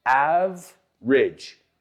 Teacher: Two syllables. We don't pronounce that e in the middle. Average, not average.